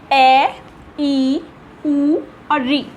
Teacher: इनके उच्चारण में, इनको बोलने में बहुत कम समय लगता है, इसलिए हम इन्हें बोलते हैं ऋस्व स्वर